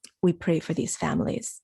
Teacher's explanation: it's serious it's almost too serious to emphasize so he puts it down low